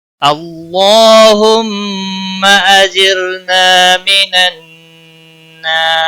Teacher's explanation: اجر را ساکن سے پہلے زیر ہے، اس لیے را کو باریک پڑھیں گے · اللہ کے لام کو موٹا پڑھیں گے زبر کی وجہ سے، اس کے اوپر کھڑی زبر بھی ہے، ایک الف کے برابر کھینچ کر پڑھیں گے، میم مشدد پر گنہ ہوگا، گنہ کی مقدار ایک الف کے برابر ہوتی ہے